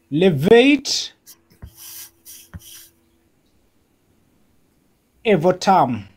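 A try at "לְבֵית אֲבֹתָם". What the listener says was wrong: Nice. Levate Avotam.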